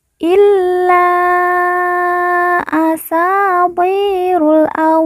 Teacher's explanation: wa yang bertasdid kita baca ditekan dan ditahan dua harakat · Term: bertasydid